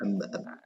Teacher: ketika kedua bibir mengatup, Hmm. maka ketika huruf ba diucapkan itu lebih kuat. Jadi lebih lengket ketimbang pengucapan huruf mim.